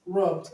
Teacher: Now the past tense marker is gonna be pronounced d. It's gonna be pronounced d because it ends with a voiced consonant.